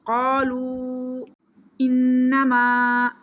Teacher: نون مشدد ہے، اس کے اوپر غنہ کریں گے